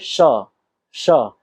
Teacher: श का उच्चारण करेंगे तो जीभ के बीच का भाग ऊपर की ओर टकराएगा